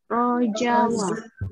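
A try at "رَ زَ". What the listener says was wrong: Jadi jangan rojak, rojak bukan rojak, rojawa bukan rojawa tapi roza. Rozawa, rozawa.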